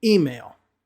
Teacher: the stress will be at the beginning.